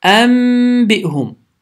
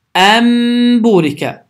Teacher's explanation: Sükunlu nundan sonra isə bə hərfi gəlməkdədir. Bu zaman qaydamız baş verir və n səsi m səsi ilə əvəz olunur.